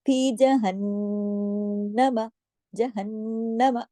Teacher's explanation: नून तशदीद के साथ आया है तो दो नून है तो दोनों पे गुन्ना होगा, तो बड़ा गुन्ना होगा, अकमल गुन्ने का हक अदा करना है लाजमी।